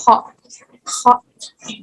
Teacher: huruf yang diucapkan dengan pangkal lidah yang menyentuh langit-langit sambil bergetar. Itu kho. Kho. · Bergetar ya di pangkal langit-langitnya itu kho